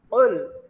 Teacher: Jadi kof itu termasuk huruf qalqalah. Jadi kayak ada dentungan di kerongkongan.